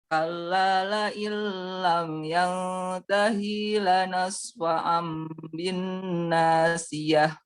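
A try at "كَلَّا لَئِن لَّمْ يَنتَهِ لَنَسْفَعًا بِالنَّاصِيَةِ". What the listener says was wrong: Ulang coba, hi-nya jangan dipanjangkan. Jangan disaktah juga. Kalla la illam yantahi lanasfa'an bin nasiyah.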